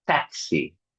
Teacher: The phoneme, the sound of X, it's equivalent at a K and an S.